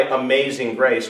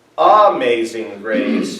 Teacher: What is the stressed syllable in the word amazing? May. That's why is the upbeat, and then may lands on the downbeat.